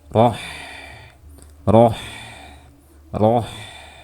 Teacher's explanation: Jadi pastikan saat membaca ha sukun, alirkan suaranya. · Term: rokhawah